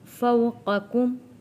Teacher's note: نقطے والے قاف کو موٹا پڑھیں گے اور یہ ڈنڈی والے کاف کو ہم نے پتلا پڑھنا ہے۔ فو حروف لین ہے۔